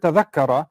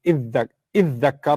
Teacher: So iddakkara becomes iddakara. Id, the dha and the ta together become a dal. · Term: fusion